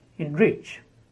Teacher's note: the prefix is spoken as in, and the stress on the main word